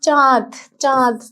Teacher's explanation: চাঁদ যখন বলি তখন কি একটা নাকের মধ্যে নাকের মধ্যে থেকে উচ্চারণ হয় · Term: আনুনাসিক